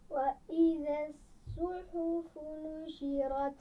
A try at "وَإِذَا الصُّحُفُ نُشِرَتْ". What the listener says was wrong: صاد کو صحیح طرح موٹا کر کے ادا کرنا ہے. وَإِذَا الصُّحُفُ وَإِذَا الصُّحُفُ